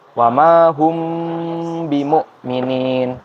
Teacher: ditahan dulu dan didengungkan, dibunyikan secara samar-samar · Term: ikhfa syafawi